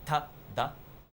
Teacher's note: Like um the T in Spanish is pronounced with the pronounced with the lips or or not with the lips but with the teeth like ta. In Japanese, the tongue is further back, right behind the teeth, not touching the teeth.